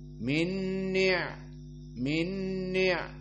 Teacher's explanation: Dan adapun dari segi sifat, maka ni'mah dari sifatul ain dia adalah jahr. Maka ain di saat disukunkan tidak keluar nafas